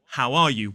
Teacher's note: we do not drop the H in that case